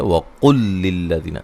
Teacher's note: وقل قاف کو موٹا ادا کریں گے، لام کو ہلانا نہیں ہے. اچھا، لام کو جو ہے وہ لام سے ملائیں گے، دونوں کو مشدد کر دیں گے، ایک لام بنا دیں گے